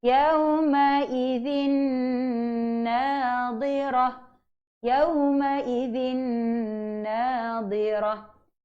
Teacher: Kalau ada, makna kata itu adalah idgham bil gunnah kamil. Bunyi sebutan nun tu hilang sepenuhnya.